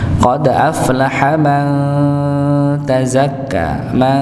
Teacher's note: nun sukun ketemu ta maka dibaca samar